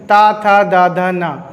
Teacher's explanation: तो आपकी जीभ जो है वो दांत से टकराएगी। ठीक है, आपकी जीभ दांत से टकराती है जब आप बोलोगे ता, था, दा, धा, ना।